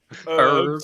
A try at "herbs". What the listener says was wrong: Well, there's a freaking H there, bro. You forgot it. You left it at home. It's literally there.